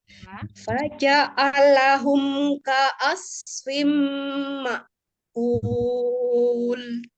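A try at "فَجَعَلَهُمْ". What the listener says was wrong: Nah, itu karena apa ya? Tanggung di huruf ain ya. Umi ancang-ancang huruf ain, maka dia kepisah dari janya. Faja'a, gitu naik ya. Padahal ainnya seharusnya mengalir, tidak dipisahkan dengan lamnya. Faja'alahum. Ya, jadi jangan faja'alahum. Jangan dinaikkan ainnya, bukan siddah, tapi dia tengah-tengah tawasud bainnya.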